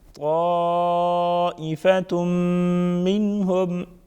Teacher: الف مدہ ساتھ میں بڑا مد 5 سے 6 الف کے برابر کھینچیں گے ، طائفة غنہ کریں گے، منهم نون ساکن کا اظہار ہوگا